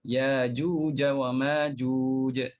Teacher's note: Jadi hamzah yang mati dia tukarkan jadi huruf mad. Jadi alif ke, jadi waw ke, jadi ya. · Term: ibdal